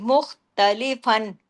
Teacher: فن کی آواز پوری اظہار کے ساتھ ہوگی